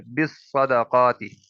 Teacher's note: اور با کے نیچے زیر آگے صاد کے ساتھ مل رہی ہے، بالصدقات، قاف حرف مستعلیہ ہے، صاد حرف مستعلیہ ہے، دونوں کو ملا کر پڑھیں گے، پر کر کے پڑھیں گے